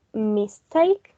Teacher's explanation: the stress remains on the root word that in this case is take and the prefix it does not take the primary stress